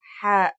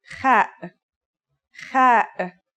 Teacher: ha is pronounced in a deeper part of the throat than kha.